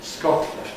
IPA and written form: ˈskɒtˡlənd (Scotland)